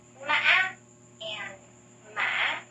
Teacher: In Southern accent, we unify the 2 tones. So, mã and mã are pronounced identically.